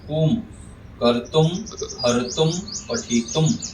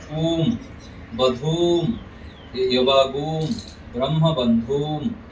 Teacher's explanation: ह्रस्व के उच्चारण के समय कम समय और दीर्घ के उच्चारण के समय थोड़ा सा अधिक समय लगता है